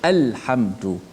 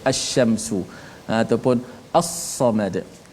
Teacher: Adapun lam syamsiyah idgham, dibaca secara idgham, iaitu lam itu tidak dilafaz, lam tu dimasukkan dalam selepas tu, seperti kita baca asy-syamsu ataupun as-samad.